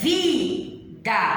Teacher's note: A sílaba vi é a sílaba tônica, ou seja, a sílaba mais forte na pronúncia.